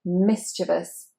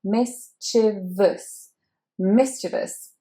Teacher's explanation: And the stress is, of course, on the mi, mischievous. Now that E is not said as long E, it is said as I.